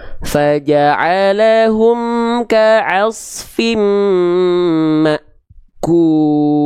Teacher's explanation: Huruf-huruf yang berjumpa dengan hamzah sukun, dia akan terasa seperti seolah terhentak atau terhenti.